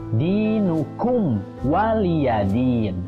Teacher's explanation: Mim bertemu dengan wa, itu dibacanya idhar syafawi juga, jadi harus dibaca jelas.